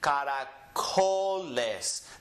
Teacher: The co gets emphasized